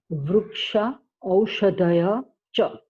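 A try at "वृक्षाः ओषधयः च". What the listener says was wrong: Shaha Aushadaya. Don't drop the visarga. Aushadayaha. Not Aushadaya. It is Aushadaya. Aushadayaha. Not O. You are saying O. It is O. Aushadaya.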